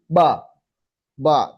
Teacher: ba ba tanpa angin sama sekali